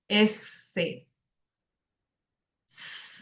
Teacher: representa el fonema consonántico fricativo dento-alveolar sordo. Ojo, dento-alveolar, S, el cual, entre muchas variedades de articulación, tiene dos principales, la apical y la predorsal.